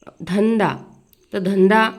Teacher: शेवटचे अक्षर आहे द अक्षर गटातील अनुनासिक आहे न